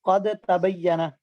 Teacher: اور طا کا مخرج ایک ہے لیکن صفات میں فرق ہے، قد تبین میں دال اور تا کا مخرج ایک ہے لیکن صفات کا فرق ہے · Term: متجانسین